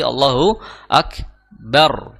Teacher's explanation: maka ro yang sukun tersebut kita baca dengan bacaan yang tebal · ro-nya yang sukun itu dibaca tebal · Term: dibaca yang tebal